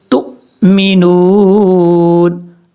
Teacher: تا کو حمزہ سے کنیکٹ کریں گے، جھٹکے کے ساتھ پڑھا جائے گا